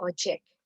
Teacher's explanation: kata ojek diucapkan dengan aspirasi